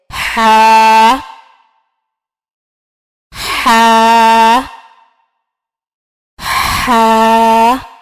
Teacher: ہا جو ہے وہ وسط حلق سے ادا ہوتا ہے. وسط حلق سے مراد یعنی حلق کا درمیانی حصہ.